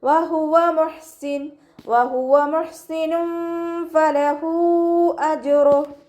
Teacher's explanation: ഹ മഖ്റജ് വരുന്നത് അഖ്സൽ ഹൽക്കാണ്. സൗണ്ടിന് ഹംസയായി പോവാൻ ചാൻസ് ഉണ്ട്